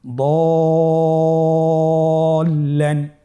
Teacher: কেন আমরা দদ হরফটি টেনে পড়ছি? যেহেতু দদ হরফের সাথে যে মাদের হরফ রয়েছে এটার উপর মোটা চিহ্নটি রয়েছে, এই জন্য এখানে আমাদেরকে 4 আলিফ টেনে পড়তে হবে।